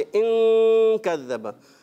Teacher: नून को छुपाते हैं। नून को बिल्कुल क्लियर करके अदा नहीं करते, उसको छुपाते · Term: इख्फा